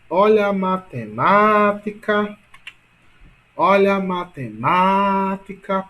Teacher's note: portanto, ma é a mais forte. Portanto, a sílaba tônica de matemática é ma